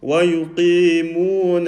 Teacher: And you say, وَيُقِيمُونَ الصَّلَاةَ, and we've made the noon full mouth. The noon should be empty mouth.